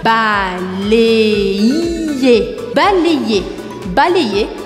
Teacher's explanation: Presta atenção que esse Y do verbo balayer eu pronuncio como se fossem dois Is. O primeiro I eu vou fazer o som E juntando com o A. Balé. E o segundo I eu pronuncio.